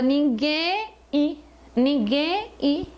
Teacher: eu tenho o som do em e do I mas eu não tenho o som do m